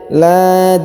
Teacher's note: Lad, jadi dalnya dipantulkan ya.